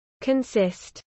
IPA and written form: kənˈsɪst (consist)